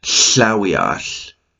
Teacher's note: you put your tongue in the position to make the L sound, but what you're going to do is you're going to take your air and you're going to blow it out of the sides of your tongue. Almost like a THL sound together, but not full, and no, it's Slawiash, it's a huckleberry, kind of thing like that, but that's the barred L.